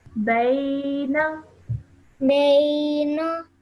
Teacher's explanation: the noon only has a simple fatha on it. So don't stretch that for too long.